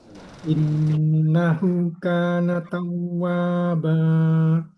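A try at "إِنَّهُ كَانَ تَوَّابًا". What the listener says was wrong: Innahu kana tawwaba. Jadi bukan dipanjangin bukan dipanjangin tapi ditekan. Innahu kana tawwaba.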